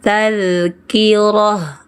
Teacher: Jangan bilang tun, ta marbutanya berubah jadi sukun ha. Saat berhenti, tazkirah.